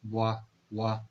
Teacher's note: ठीक है, बाइलेबियल का मतलब क्या है, बाइलेबियल का मतलब है बाय mean टू and लेबिया mean lips, यानी वो साउंड जो हमारे जो यहाँ पर टू लिप्स हैं ये इन्वॉल्व हो साउंड प्रोडक्शन में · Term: बाइलेबियल साउंड